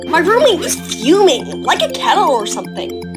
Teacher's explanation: the keys to imitating a Valley Girl accent are the rising intonation, the vocal fry at the end of the sentence, and the word like it feels like frickin' or bloody or whatever, depending on where you're from.